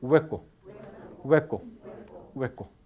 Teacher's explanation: cuando se dice hueco no hay fricción debe ocurrir fricción